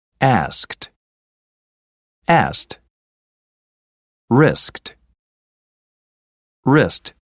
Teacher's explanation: so you might hear asked and wrist in these two words the final D sound also changes to a T